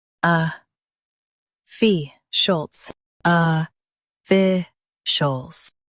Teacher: Emphasize fi and soften shults.